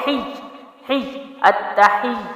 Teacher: ہا جو ہے وہ پڑی حرکت ہے، زیر ہے ہی، لیکن یا پہ بھی تشدید ہے تو ہا کو یا میں داخل کریں گے، دو حروف کا ٹائم دیں گے، سختی جماؤ کے ہی ہی التحی۔